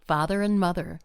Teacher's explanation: word and, A-N-D, is often shortened to un, or just an N sound, n, such as father and mother, father and mother.